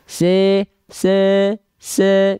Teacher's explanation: Tengah lidahnya naik pasti clear vokal i-nya si si si tapi kalau tengah lidahnya enggak diangkat enggak akan vokal I pasti se se se gitu bunyinya